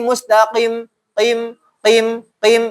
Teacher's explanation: Pangkal lidah itu pangkal paling dalam. Dia bukan huruf tenggorokan. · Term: huruf lisan